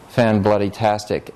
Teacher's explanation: tas is the syllable that has the loudest volume. It's getting this little stress. And bloody can stick right before it.